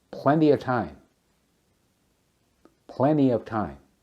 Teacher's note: Elision, dropping the T in plenty of time.